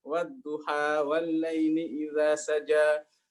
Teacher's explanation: Quraisy mah enggak suka imalah ya, sukanya wadduha walaili idza saja